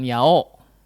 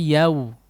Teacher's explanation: Enggak jadi o juga ya, tapi yau. Condong ke dhammah malah, bukan o ya. Yau. Langsung ditembak karena kedengeran itu ya. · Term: setengah dhammah